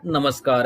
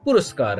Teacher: दंत सकार होगा, मूर्धन्य सकार नहीं होगा।